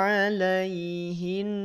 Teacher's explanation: Nun bertasdid maka tahan dulu dua harakat jangan langsung di lepaskan